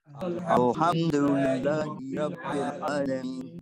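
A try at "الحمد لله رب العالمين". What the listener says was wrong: Okay, so Alhamdu, no bouncing on the lamb. Alhamdu. Alhamdu. Your tongue goes to your palate and it lets go, there's no sound. Al. No sound, right? You go straight to the ha. Alhamdu.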